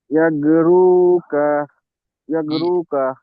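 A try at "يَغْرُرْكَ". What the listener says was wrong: ইয়াগো রুর, double র আছে, রুর, ইয়াগো রুর। সাকিন আছে, মিলিয়ে পড়তে হয়।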